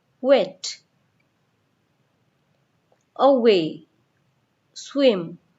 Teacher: While pronouncing semivowel W, we have to round our lips as we say the vowel U.